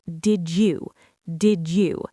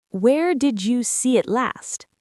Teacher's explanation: The D sound in did and the U sound in you push together to create a J sound. It sounds like did you, did you. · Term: linked did you sound